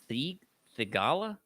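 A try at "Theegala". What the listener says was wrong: The H is silent.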